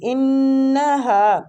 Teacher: इन्नहा नून मुशद्दद पे गुन्ना भी करना है